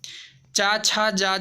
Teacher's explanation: चा छा जा झा व्यंजन के उच्चारण को तालव्य दिया गया है, उच्चारण स्थान।